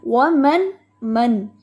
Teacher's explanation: نون کی آواز کو لمبا نہیں کرنا کیونکہ یہاں پہ اظہار ہو رہا ہے